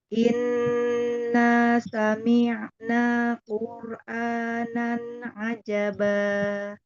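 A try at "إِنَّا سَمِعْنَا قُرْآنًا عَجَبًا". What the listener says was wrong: Jabak kasroh, sempurnakan kasroh. Jangan miring, jangan imalah. Inna sami'na. Sami'na.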